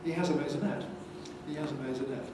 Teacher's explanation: If you have a sequence of accents in what we call a head, it's a stepping head, and the default is that each accent is slightly lower than the one before.